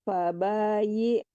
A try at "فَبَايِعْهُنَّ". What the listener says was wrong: Bu, iya, jangan i ya tapi fabayi. Bukan i, iya, di tengah-tengah tenggorokan. Fabayi hun.